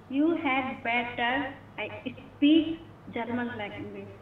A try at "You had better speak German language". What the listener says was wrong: इसको जर्मन नहीं बोलेंगे, रे को थोड़ा सा कम बोलना है, जर्मन. ऐसे नहीं जर्मन लैंग्वेज, रे का साउंड नहीं है इसमें ज़्यादा, जर्मन लैंग्वेज.